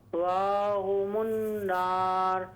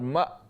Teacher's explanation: جھٹکے کے ساتھ آواز کو بند کر لیں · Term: حمزہ